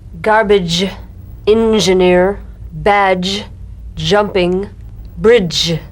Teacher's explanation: This is the voiced tongue point plus tongue blade S sound consonant. It's a combination of the D drum beat and the ZH. So, place the tongue on the upper gum ridge for the D, D, then let the tip peel down for the ZH resonance.